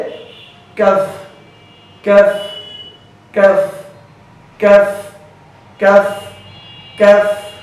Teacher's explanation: কাফ হরফটি হামসের হরফ, এটা অবশ্যই পড়ার সময় বাতাস বের করবেন · জিহ্বার আগা, জিহ্বার গোড়া একটু আগে বাড়িয়ে, আবার শুনুন, জিহ্বার গোড়া একটু আগে বাড়িয়ে তার বরাবর উপরে তালুর সঙ্গে লাগিয়ে কাফ হরফটি উচ্চারিত হয়। কাফ হরফটি পড়ার সময় আওয়াজ নরম হবে, চিকন হবে, নিচের দিকে দাবিত হবে, হামস মানে বাতাস চালু, আওয়াজ বন্ধ।